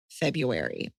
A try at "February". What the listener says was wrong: it's actually pronounced February. There's an R.